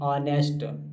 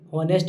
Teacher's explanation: कुछ वर्ड्स में तो वो H साइलेंट होता है इन वर्ड्स लाइक ऑनेस्ट, HONEST, जिसे हम लोग होनेस्ट भी बोल देते हैं, वो ऑनेस्ट होता है।